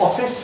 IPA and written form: ˈɒfɪs (office)